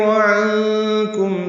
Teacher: عنکم میں نون ساکن پہ اخفا ہے, آگے کاف آ رہا ہے, میم ساکن پہ اظہار شفوی ہے.